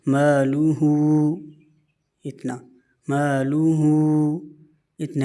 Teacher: الٹا پیش کو 1 الف کی مقدار کھینچا جاتا ہے